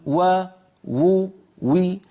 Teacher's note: هذه محاولة للتوفيق بين أقوال الأئمة، وإلا فمهما كان وضع الواو مادية كانت أو غير مادية لا بد من عمل الوترين الصوتيين لأنها مجهورة، لا بد من انضمام الشفتين إلى الأمام